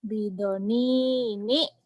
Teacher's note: Ini kan ba pendek, do pendek, iya, ni-nya baru panjang, ni-nya pendek lagi. Tekan, tahan. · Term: panjang pendek